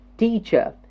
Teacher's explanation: in the first word teacher teach that syllable gets the stress teacher two syllable the first syllable gets the stress